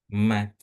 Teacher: Ee bibir, Pak. Jadi, bibir ketemu bibir. Bibir atas ketemu bibir bawah. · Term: huruf mim